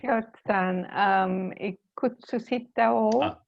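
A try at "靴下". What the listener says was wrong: Socks are not ikutsushita, but just kutsushita.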